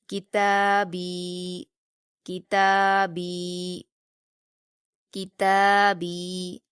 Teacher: ہم صرف کاف کو جلدی پڑھیں گے، تا اور با دونوں کو کھینچ کر پڑھیں گے